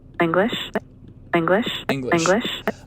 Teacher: the f zero contour still kind of going down here it bottoms out more in this engma in the middle of english and right and then pops up a little bit uh with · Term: l star